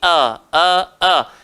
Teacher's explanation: Hamzah, kita dah sebut tadi, keluar dekat bawah tekak.